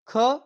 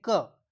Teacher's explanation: जैसे क जिसमें हवा कम लगती है उसे अल्पप्राण जिसमें हवा बाहर ज्यादा आती है उसमें महाप्राण और जिसमें कम आती है वे अल्पप्राण होते हैं।